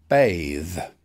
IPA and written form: beɪð (bathe)